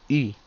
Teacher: Es como pronunciar i y a la vez querer decir u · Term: u francesa